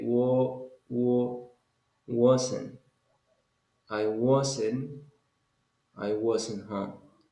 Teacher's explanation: it's not like a it's like between a and o